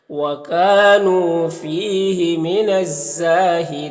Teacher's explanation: وَكَانُوا کاف میں الف مدہ ہے، نون میں واو مدہ ہے، فی میں یا مدہ ہے۔ یہاں پر الف لام حروف شمسی زا کے شروع میں ہے تو الف لام دونوں کو نہیں پڑھیں گے، اور الف مدہ ہے، ایک الف کے برابر کھینچیں گے، اور یہاں پر وقف کریں گے تو مد عارض وقفی ہوگا، تو اس طرح سے پڑھیں گے وَكَانُوا فِيهِ مِنَ الزَّاهِدِينَ۔